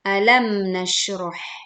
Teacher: ayat pertama Alquran surat al-insyirah perhatikan saat kita membaca alam nasyroh alam tekan huruf mim sukun tanpa memantulkan